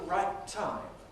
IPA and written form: ˈraɪt̚ ˈtaɪm (right time)